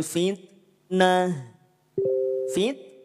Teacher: saat dia sukun sifat hamsnya berada pada kadar percikan saja jadinya PN perecikan nafas tidak dialirkan